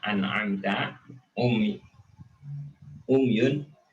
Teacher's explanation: Penyebab dinamakan idhar safawi adalah ketika mim mati bertemu dengan 26 huruf hijaiyah tersebut harus dibaca idhar, karena pengucapannya haruslah dengan idhar tanpa disertai gunah dengung yang sempurna. Sedangkan dinamakan safawi disebabkan karena makhraj mim sukun adalah pertemuan antara perut kedua bibir atau safatain